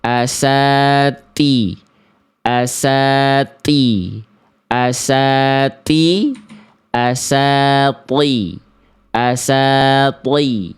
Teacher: Ya, jadi yang th bunyinya lebih berbobot. Kenapa? Karena yang th naikin pangkal lidah.